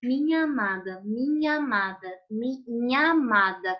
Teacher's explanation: eu terminei essa palavra com a letra a e comecei a próxima palavra com a letra a então eu falo isso junto porque a mesma vogal